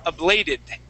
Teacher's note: we can switch that T to a D sound